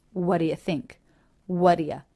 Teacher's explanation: rather than having a stop T go into a d it's even more casual and the t is dropped all together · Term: T is dropped altogether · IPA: [wʌ‿də‿ jə θɪŋk ə‿ðɪs‿wʌn]